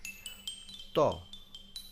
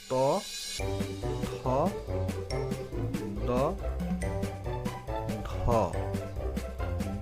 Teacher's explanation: আমরা উপরে দাঁত দিয়ে জিহ্বায় কামড় দিয়ে তারপরে বাতাস ছেড়ে দিব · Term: দাঁত থেকে